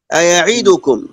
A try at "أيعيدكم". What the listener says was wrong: بتختلسها يعني زي ما أقول كده بتسرقها بتخطفها. هذا مهم جدا وهذا تريده حتى في بعض القراء المشهورين الكبار عنده المشكلة هذه في أسلحتكم ألسنتكم. أيعيدكم أيعيدنا أتعيدنا يخترسنا